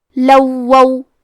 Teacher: ہمیں یہ دونوں حرکات کو ظاہر کرنا ہے اور حرف الواو کو 2 حرف کے برابر پڑھیں گے